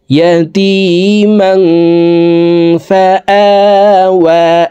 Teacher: পরে ইকফার 15টি হরফের ভিতর একটি হরফ ফা আসছে এই কারণে এই তানউইনওয়ালা মিমটি অর্থাৎ জবরওয়ালা দুই জবরওয়ালা মিমটি নাকের ভিতরে লুকাইয়া গুন্নার সহিত পড়ব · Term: ইকফা গুন্না